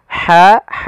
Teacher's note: makhrajnya dari tengahtenggorokan kita dan dia ha juga ada sifat apa namanya ee rikhwahnya mengalirnya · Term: huruf Ha